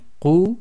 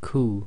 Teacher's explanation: One's qaf, which is you're blocking the throat and letting the sound out, and it's a heavy letter, and then we have the kaf, which is nice and light